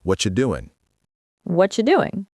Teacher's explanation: the G at the end of doing often gets dropped in casual speech, so it becomes doin'